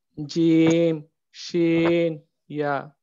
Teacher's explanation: জিহ্বার মধ্যখান হইতে তার বরাবর উপরের তালুর সঙ্গে লাগে উচ্চারিত হয় জিম, শিন, ইয়া।